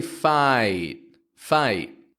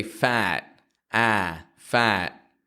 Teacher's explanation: when I say fight fight I'm using two positions to make the I sound whereas if I say fat a fat I'm only using one position